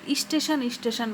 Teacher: উচ্চারণের সুবিধার জন্য আগে একটা রস্বই দিয়ে দিয়েছে, এটা রস্বই যুক্ত করে নিয়েছে। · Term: আদি স্বরাগম